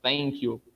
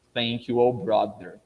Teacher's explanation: pronunciando o th mais como um thank you entre os dentes